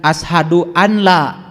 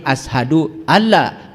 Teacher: Idgham, kalau idgham berarti nun mati ketemu ya masuk. Nun mati ketemu lam masuk. Jangan ashadu an la, tapi ashadu alla, walaupun di situ ada nun. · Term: idgham bila gunah